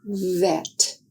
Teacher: To make the sound of the letter V, air is blocked by the upper front teeth in light contact with the lower lip. Is a voiced sound.